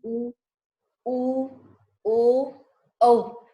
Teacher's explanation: स्वरों का उच्चारण करते समय हमारे मुख गोलाकार की स्थिति में हो जाता है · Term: वृत्ताकार